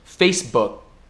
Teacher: quase pronunciando o K, mas não pronunciando.